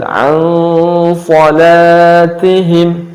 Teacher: Karena setelah huruf nun adalah huruf shad, dan shad adalah termasuk huruf isti'la yang dibaca tebal, maka cara bacanya pun ikhfa'nya dibaca tebal. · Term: ikhfa samar